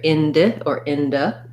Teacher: this letter i is either going to say an e or a schwa